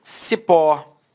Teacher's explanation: Repare que a sílaba tônica é a última e ela é terminada em O. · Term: oxítona